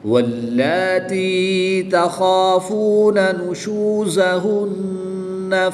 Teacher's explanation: وقف کی حالت میں نون مشدد کی زبر کو ساکن کر دیں گے اور تشدید کو باقی رکھیں گے۔